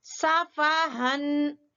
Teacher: ہا بالکل اقصی حلق سے، حلق کے آخری حصے سے جو سینے کے پاس ہے